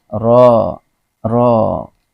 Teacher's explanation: karena dia berbaris fathah, maka dibaca dengan tafkhim atau tebal